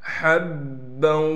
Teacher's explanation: حبا، ہا کو با سے ملائیں گے، ہا کو صاف کر کے گلے سے نکالنا ہے